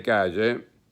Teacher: esa L se transforma en fuertemente fricativa, en una Y que se arrastra